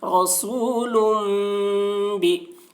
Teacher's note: تنوین کے بعد با آ رہا ہے، اس لیے تنوین کو میم سے بدل کر غنہ اور اخفا کے ساتھ پڑھیں گے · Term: اقلاب